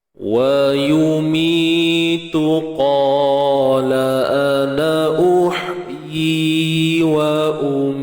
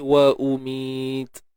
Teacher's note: Hams kat ujung tu, syiddah dulu, tahan dulu suara, kemudian baru lepaskan nafas tu lah